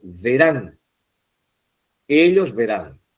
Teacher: La tilda está en la última sílaba, la tónica está en la última sílaba y está terminando en n